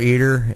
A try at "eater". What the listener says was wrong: said eater. The way you said it, you said eat her.